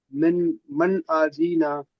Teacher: তাহলে এখানে বিনা গুণায় জাহির করে তাড়াতাড়ি পড়া হলো।